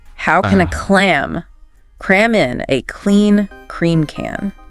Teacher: It requires a very deliberate movement of the back of your tongue against the soft palate for the K. Okay. And slightly further forward for the C sound.